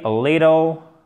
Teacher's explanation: Little, ça se prononce presque comme un de en American English.